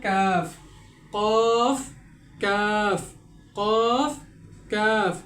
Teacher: উচ্চারিত হয় পাঁচ নম্বর মাখরাজ জিহ্বার গোড়া থেকে একটু আগে বাড়িয়ে জিহ্বার গোড়া থেকে একটু আগে বাড়িয়ে তার বরাবর উপরের তালুর সঙ্গে লাগিয়ে কাফ উচ্চারিত হয়